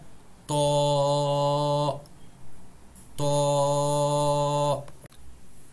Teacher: Nous prenons la langue, nous posons le palais là-haut devant, derrière Thanaya, les dents incisives supérieures, nous faisons la bouche ronde, c'est une lettre épaisse